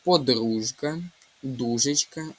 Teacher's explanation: У слові подружка і дужечка буде звук ж. В українській мові звуки не оглушуються, тому тут немає звука Ш.